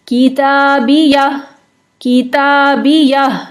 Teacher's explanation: آخر میں ہا کی ساؤنڈ کو واضح کریں گے